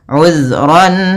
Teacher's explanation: Kemudian pada lafal ran bertemu dengan alif atau hamzah, kita namakan dengan bacaan izhar halqi. Suara tanwinnya jelas